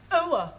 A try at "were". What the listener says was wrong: Try again, but this time, don't say oa, just were.